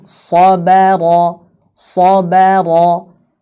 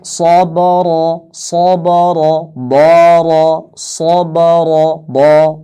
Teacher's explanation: shad itu tebal, ra itu tebal, ba itu tipis.